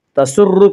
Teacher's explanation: تسر کی را کو پر پڑھا جائے گا